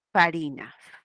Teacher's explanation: La F que es una labio dental.